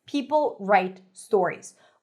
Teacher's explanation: People write stories where each word is emphasized equally.